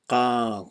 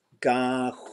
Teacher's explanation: Because that's ga, and they have similar sounds at the beginning and the end, but they're a little bit different because you got a back G, as opposed to a pizza burning zone G, g.